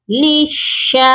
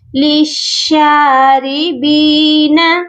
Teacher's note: کو چھوڑ دیں، یہاں پر ہم لام کو نہیں پڑھیں گے، مشدد لام کو مشدد شین کے ساتھ ملا دیں گے ، لام شین زیر لش، شین کھڑی زبر شا، لشا، را